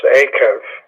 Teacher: You're stressing the first syllable with that guttural